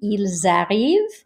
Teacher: The exception to that is that if you have a word beginning with a vowel, the liaison tells you if it is singular or plural, because if you look here, il arrive, here we would carry the S sound over. It would actually sound like a Z.